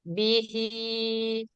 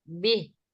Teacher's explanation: ketika wasal dipanjangkan bihi ketika waqaf disukunkan Bih